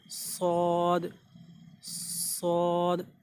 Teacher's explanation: जैसे ज़ा और सीन हमने बोला था, ज़बान की नोक और ऊपर और नीचे वाले दांत मिलने के करीब होंगे, लेकिन स्वाद में तो हल्का सा आपको मुंह भरना है और हल्की सी थोड़ी सी सीटी सी बजानी है। सौद, सौद, इस तरह से स्वाद निकलेगा।